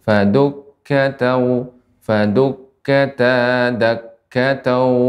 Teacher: untuk tasydid pada kaf tidak terlalu lama ya